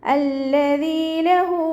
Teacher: ലാമിന് ശ്രദ്ധ വന്നിട്ടുണ്ട്, 2 ഹർഫുകൾ ഉച്ചരിക്കുന്ന കനം കൊടുക്കുക.